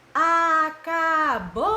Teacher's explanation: Em qual das sílabas a tia demorou mais? No bol. Então, a sílaba tônica é o bol